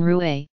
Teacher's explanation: in general it is described as a voiced uvular fricative as in roue · French has one rhotic whose pronunciation varies considerably among speakers and phonetic contexts. In general, it is described as a voiced uvular fricative, as in roué, wheel.